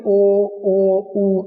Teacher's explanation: जो बोलते हुए जिन उच्चारण करते हु जो हमारे होट है वो राउंड हो जाते है एक तरीके से ओ की आकृति बन जाती है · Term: वृत मुखी